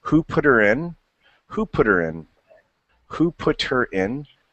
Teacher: you see how the t almost takes on like a d